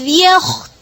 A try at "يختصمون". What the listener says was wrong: ता को मोटा नहीं करें फिर से